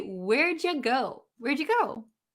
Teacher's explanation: the word you we don't like to say as oo